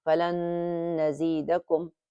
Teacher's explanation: So it becomes as falan nazidakum. Falan, you hold it, and when you're holding it, that nasal sound comes out automatically. And the rule is that we hold this for 2 beats or for 2 counts, and that's how it's read.